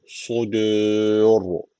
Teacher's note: Su kalın, dü ince. Ra harfi de kalın okunuyor.